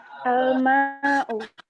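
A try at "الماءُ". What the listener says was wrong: Ahsanti.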